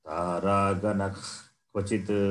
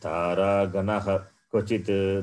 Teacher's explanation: If Visarga faces Kakara as the next letter, immediate next letter, then Visarga takes this sound, the sound which comes from the root of the Jikhva, the tongue.